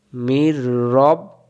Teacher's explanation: নুন সাকিনের পরে র, তবে গুন্না ছাড়া। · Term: ঈদগম